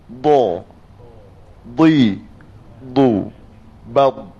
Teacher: Di hujung lidah letak di makhraj lam, iaitu di atas gusi.